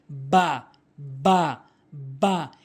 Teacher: দুই ঠোটের ভেজা অংশ মিলিয়ে বা হরফটি উচ্চারণ করতে হবে